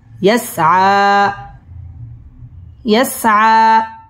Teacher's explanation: ইয়াসআ মধ্যে তবাই একালিফ টান দিয়ে পড়তে হবে এবং এইখানে ওয়াকফ করতে হবে।